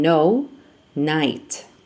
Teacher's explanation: the initial loss of k before n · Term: apheresis